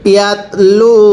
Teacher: এই লামের মধ্যে কিন্তু এক আলিফ টানতে হবে, পেশের পরে ওয়াও সাকিন এক আলিফ টানতে হয়